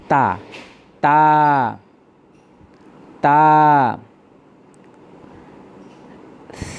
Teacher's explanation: তা উচ্চারণের সময় জিহ্বার আগা সামনের উপরের 2টি দাঁতের গোড়া থেকে উচ্চারিত হয়।